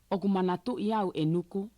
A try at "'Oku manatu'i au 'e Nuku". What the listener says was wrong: Tu'i, tu'i. No, no, you're saying t. I hear like air coming out. You got to make sure it's tu. Yeah, so if you say as if there was a Y here, it'll sound right.